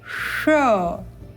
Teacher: इस श का उच्चारण अपनी जिह्वा को तालु से थोड़ा पीछे लेकर जाएंगे मूर्धा की ओर, और अब उच्चारण करेंगे श।